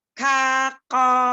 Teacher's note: Sama-sama kuat, tapi kafnya dia tipis, kofnya dia tebal. Jadi kafnya itu istifal, kofnya isti'la.